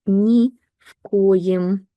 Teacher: v is pronounced more like f because k is voiceless